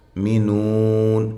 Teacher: یؤمنون، حمزہ کو جھٹکے کے ساتھ۔ مینون، یہ واو مدہ ہے، وقف کی صورت میں مد کر سکتے ہیں